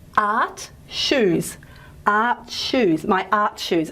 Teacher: you can probably appreciate that it's a combination of t plus shi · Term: affricates